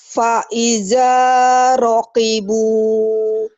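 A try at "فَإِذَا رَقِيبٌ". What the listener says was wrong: Faiza, zalnya agak rapuh ya. Faiza rakibu, faiza rakibu, faiza, za. fa-nya harus agak jelas, kedengarannya kayak wa. Fa, fanta, f, fa, faiza, ya.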